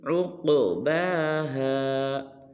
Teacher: جب عین کو قاف ساکن کے ساتھ ملائیں گے تو قاف کو پر بھی کریں گے اور قلقلہ بھی، ایسے عقباہا۔